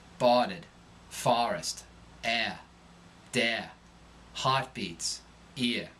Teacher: Drop R endings and rise in pitch.